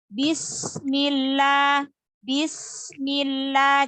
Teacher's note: sin sukunnya karena dia punya sifat hamas, yaitu mengalirnya nafas ya. Insya Allah.